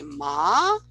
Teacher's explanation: You can say ma, it's a pitch that goes up, or you can produce something where down and up, ma.